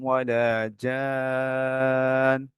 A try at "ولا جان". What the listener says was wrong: না, জান হবে না কিন্তু কেন? দেখেন নুনের উপরে সাদ্দা আছে, তাই না? তো নুনের উপরে সাদ্দা তো গুণ না করে থামতে হবে।